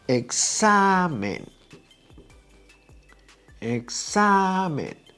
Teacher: The second to last syllable is the one that is stressed, is the long one. Right? I don't have to write down the acento because it's ending in N. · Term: grave word